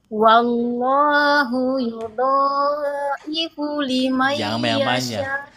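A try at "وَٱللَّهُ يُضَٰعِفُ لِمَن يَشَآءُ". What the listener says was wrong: Dhalnya 2 harokat aja Bu. Dhalnya 2 harokat aja, jangan panjang.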